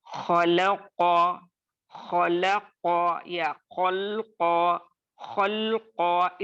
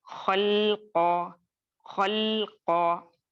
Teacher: लाम को बारीक ही रखना है किसी भी सूरत हाल में, तो वरना ये लहने खफी हो जाएगा।